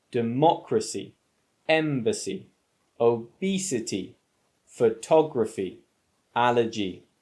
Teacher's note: the stress is on the antipenultimate syllable